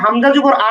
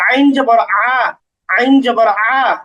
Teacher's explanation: হামজা জবর আ এটা খুব সহজভাবে উচ্চারণ করতে হবে, আর আইন জবর আ, আইন জবর আ এটা একটু গলার মাঝখানে নিতে হবে। আইন জবর আ এটা একটু গলার মাঝখানে নিতে হবে।